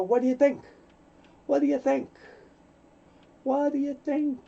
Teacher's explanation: The T and the D, very similar. You only hear one soft D sound.